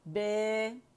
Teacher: جب آپ امالہ کرتے ہیں, امالہ صغرا کرتے ہیں, تو آپ کی زبان کا درمیانی حصہ تھوڑا اٹھ جاتا ہے